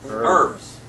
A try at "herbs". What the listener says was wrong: you dropped the H it's a silent herbs not herbs